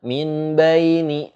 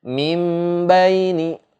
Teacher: Nun mati ketemu ba hukumnya iklab, maka cara bacanya adalah mim, dimasukkan nun sukunnya ke dalam huruf mim. Mim baini gitu, disertai dengung sebanyak 2 harokat gitu.